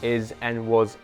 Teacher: how is and was end with a Z instead of an S